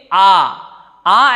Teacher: आ ऐसा है जिसको बोलते वक्त हमारा पूरा मुख खुलता है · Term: विवृत स्वर